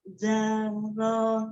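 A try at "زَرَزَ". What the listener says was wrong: Oh, belum dapat zal dengan zanya. Kalau za-nya ujung lidahnya ada di ujung gigi seri atas. Tapi kalau zai-nya ujung lidahnya di antara gigi seri atas dan bawah.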